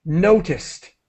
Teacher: when you add the D you pronounce the Ed as quickly as possible as a t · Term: t sound